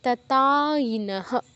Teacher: দুটো ত আছে আমাদের টেন্ডেন্সি থাকতে পারে একটা তো বাদ দিয়ে দেয়ার এটা খেয়াল রাখবেন দুটো তই যেন উচ্চারণ হয়